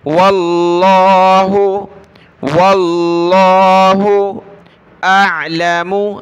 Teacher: لفظ اللہ کو ہم نے موٹا کر کے پڑھنا ہے کیونکہ واو پر زبر ہے، یعنی لفظ اللہ سے پہلے والے حرف پر زبر ہے تو موٹا پڑھیں گے.